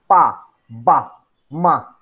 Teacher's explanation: the lower lip and upper lips approach or touch each other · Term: bilabial